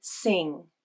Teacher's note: then as the word progresses to the ng consonant notice how the tongue pulls back during the vowel as it prepares for the ng consonant